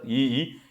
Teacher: ऱ्हस्व ई, दीर्घ ई तालव्यमध्ये येतात.